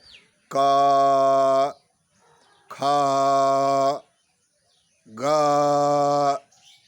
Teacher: आप देख रहे हैं कंठ से निकल रहा है सीधे